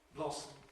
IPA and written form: ˈblɒsm̩ (Blossom)